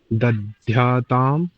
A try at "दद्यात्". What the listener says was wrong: not not the dhyat, the dhyat, ध्य ध नहीं होगा, द होगा.